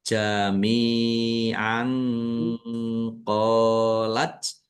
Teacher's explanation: Fathah tanwin bertemu dengan huruf qof. Bacaan ikhfa dibaca samar-samar.